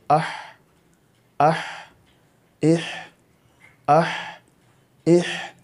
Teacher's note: इसका मखरज है हलक के दरमियानी हिस्से से